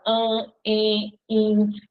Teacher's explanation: As vogais no meio da palavra, diante de M e de N, vão ficar com um som nasal.